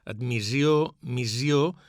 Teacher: en paraules com admissió, emissió, omissió o missió, en usos informals pot fer sonora la S, admissió, missió, però seria un tret de poca formalitat.